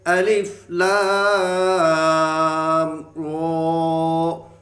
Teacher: اگر میم ساکن کے بعد با اور میم کے علاوہ کوئی حرف آ جائے تو وہاں قاعدہ جو لاگو ہوگا وہ ہوگا اظہار شفوی کا قاعدہ، یعنی کہ یہاں ہم غنہ نہیں کریں گے، اظہار ہوگا، غنہ بالکل نہیں ہوگا۔